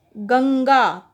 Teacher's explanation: गंगा कैसे नाक से आवाज़ आ रही है ना, और इस पे ये बिंदु लगा हुआ है। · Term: अनुस्वार